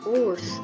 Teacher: untuk pelafalan W ini untuk gigi atas menempel dengan bibir bawah